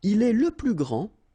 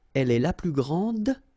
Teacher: the masculine, grand, so you don't pronounce the final D, will be exactly the same as the plural form for the masculine, grand.